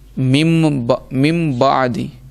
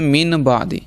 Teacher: نون ساکن اور تنوین کو ہم میم سے بدل کر پڑھیں گے، میم سے بدل کے پڑھیں گے اور گننا بھی کریں گے، جیسے ہم نے لفظ سنا ہوگا مم بعدی، اصل میں یہ لفظ ہے من بعدی، لیکن یہاں اقلاب کا قاعدہ لگا اس لیے مم بعدی پڑھا ہے، مم بعدی، ٹھیک ہے نا۔